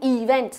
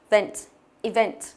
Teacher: Trọng âm của nó rơi âm tiết thứ hai.